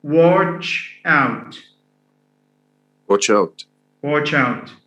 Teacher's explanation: So stress here falls on the adverbial. So when we have verb, adverbial, stress falls on the adverbial.